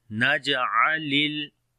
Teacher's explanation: On the jim we make qalqala, which is the weak qalqala · On the lam we make tawassut quality